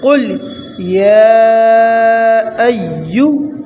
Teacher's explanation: یا کو ایک الف کے برابر کھینچیں گے